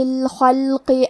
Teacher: کلمت الخلق میں حرف الخا کی ادائیگی حلق کے اوپر والے حصے سے ہے. خا حروف تفخیم میں سے ہے تو ہم یہ حرف کو موٹی آواز میں پڑھیں گے. · قاف کی ادائیگی زبان کے جڑ اور تالوں کے نرم حصے سے ہے. قاف حروف تفخیم میں سے ہے تو ہم یہ حرف کو موٹی آواز میں پڑھیں گے.